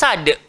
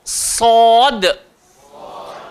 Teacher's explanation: Tempat keluar sama. Hujung lidah. Langgar belakang gigi bawah. Dan sifat dia kena tebal